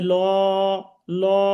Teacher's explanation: জবর আছে আল্লাহ শব্দের শুরুতে ডানে, এই জন্য এটা লামটা মোটা হবে